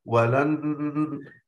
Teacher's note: أضغمنا النون الأولى في النون الثانية وأتينا بغنة مع ذلك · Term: الإدغام بغنة